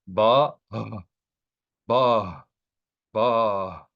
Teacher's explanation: So you will pronounce the letter B with the vowel of the kamas, and then you will pronounce the H consonant sound of the mapik, and no vowel should follow that H sound.